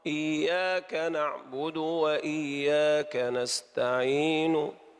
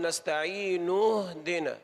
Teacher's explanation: نستعين هذا روم، لم نقل نستعين اهدنا، لم ننطق زمن الضمة كاملا، إنما جئنا بجزء منه